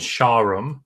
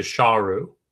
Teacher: word King is shawm and it ends with an M shawm but in later periods even slightly later periods that final M drops off so sha Rome goes to shahru no M on the end